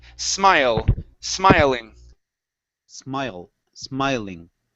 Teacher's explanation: the vowel opens up a little bit more it's a little thicker